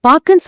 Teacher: பாக்கு அந்த ஊ ஓசை முழுமையா வெளியே வராது. ஆமா, பாக்குன்னு சொல்லும்போது கு பாதியிலேயே நறுக்கப்பட்டது போல ஒலிக்குது.